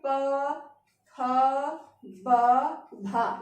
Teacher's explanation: आपके होठ आपस में चिपक रहे हैं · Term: पा वर्ग, ओष्ठ